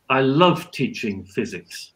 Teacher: if I say I love teaching physics and I've stressed love I'm demonstrating how strong is the positive feeling I have when I'm teaching physics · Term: nuclear stress